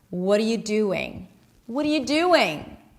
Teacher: when we connect those two vowels, we get the W sound